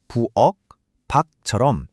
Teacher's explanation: 부엌의 받침은 키역이고 밖의 받침은 기역이죠. 하지만 발음할 땐 둘 다 똑같이 부엌, 박처럼 기역 소리로 끝납니다. 글자 모양에 더 이상 속을 필요가 없는 거죠.